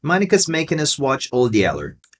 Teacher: Você pode parar no D, dar uma pausa bem pitiquinha e aí dizer também Yeller.